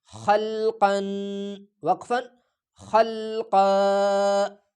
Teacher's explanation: آخری حرف پہ جب دو زبر تنوین آ جائے دو زبر والا، تو اس کو ایک وقف کی صورت میں ایک الف کی مقدار کھینچا جائے گا